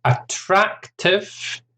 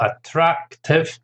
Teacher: 3 syllables, stress on the second syllable